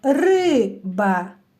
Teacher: слово має два склади наголошений перший склад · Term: наголос